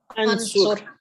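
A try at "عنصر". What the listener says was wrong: नहीं, सही बोलें, दोबारा बोलें. और अभी जैसे हमारी सिस्टर ने बड़ा अच्छा बता दिया था, अगर आप कहेंगे ना अनसुरू तो वो लंबा नहीं करना उसको.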